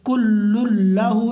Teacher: لام آ گیا، تو لام جب آ گیا ہے تو تنوین کو غائب کر دیں گے، نون ساکن کی آواز کو غائب کر دیں گے. کل لہو اس کو ادغام تام کہتے ہیں.